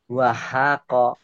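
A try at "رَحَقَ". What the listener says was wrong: Bukan wow ini. Ini apa ini? Rohako. Ini baru.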